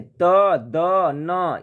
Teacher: त, द, न, ये दंत से उच्चारण होता है